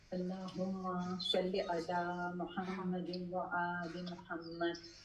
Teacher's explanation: आपने जब सल्ले अला कहा ना तो एकदम सीटी की आवाज आई, यही असल मखरज है इसका, भारी और सीटी की आवाज